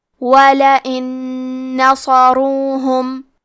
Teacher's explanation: ادغام کا معنی ہے حرف کو حرف میں داخل کرنا تو ہم نون ساکن کو دوسرے نون میں ملا کے ایک ہی نون غنہ اور تشدید کے ساتھ ادا کریں گے. وَلَئِن نَصَرُوهُمْ. · کلمت نصروہم میں حرف الصاد کو بھاری آواز میں پڑھنا ہے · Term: ادغام بغنہ